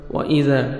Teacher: وَإِذَا، مد جائز ہے، الف مدہ کے بعد نیکسٹ کلمہ کی سٹارٹنگ میں حمزہ آ رہا ہے، 3 سے 4 سیکنڈ ایکسٹرا آپ نے مد کرنی جس کو مد جائز کہتے ہیں.